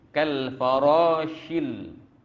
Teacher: Kal farashil, ya, bunyi tafashi tu kena ada, ya, berhamburan. Shin berhamburan bunyinya, tafashi. Macam mana kita menyembur racun.